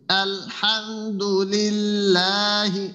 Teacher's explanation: আমরা যে বাংলা স্বর আ বলি তো ঐরকম একেবার ঢিলা হবে না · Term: হামজার উচ্চারণটার